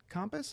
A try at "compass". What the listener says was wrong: Compass. It's compass. Compass. Compass. You're pronouncing the A. It's not wrong. Well, it's not wrong. It's just not how most people say it. Compass. Nope. CUMPAS. Compass. It's compass.